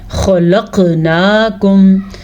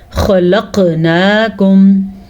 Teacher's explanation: اس خا کو پر پڑھیں گے کیونکہ خا حروف مستعلیہ میں سے ہے